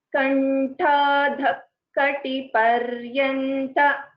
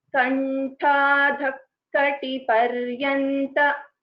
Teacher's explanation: So the Visarga is not fully pronounced.